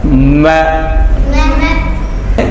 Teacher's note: ہونٹ. میں جو ہے یہ ہونٹ کا جو خشک حصہ ہوتا ہے، آگے والا خشک حصہ، اس سے یہ ادا ہوگا